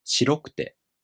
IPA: shiroꜜkute